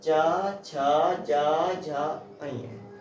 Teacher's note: जब हमारी जीवा का मध्य भाग, जब हमारी जीवा का अग्रभाग, जब हमारी जीवा का अग्रभाग हमारे तालु को छूकर आवाज निकालता हो तो उसे हम तालव्य व्यंजन कहते हैं।